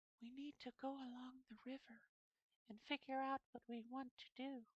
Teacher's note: it's like almost no resonance and so breathy